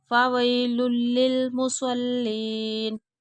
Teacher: تنوین کے بعد لام آ رہا ہے تو غننے کے بغیر ادغام ہوگا